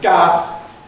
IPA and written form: gaə (Gower)